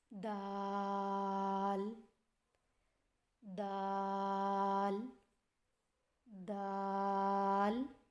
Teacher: دال کی ادائیگی میں زبان کی نوک کو سامنے والے اوپر کے 2 دانتوں کی جڑ سے لگا کر باریک آواز میں پڑھیں.